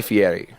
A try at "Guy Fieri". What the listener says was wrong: Why do you roll his R?